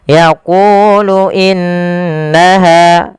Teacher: tahan di lafal qu karena dia mad tabi'i 2 harakat. Panjangkan kunya 2 harakat.